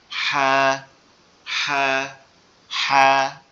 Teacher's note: আর নিচে যেটা আছে এটার নামও কি, হা, কিন্তু এটার উচ্চারণ কেমন হবে, এটার উচ্চারণটা একটু আওয়াজটা চাপ দিয়ে, অর্থাৎ গলা চেপে আওয়াজ হবে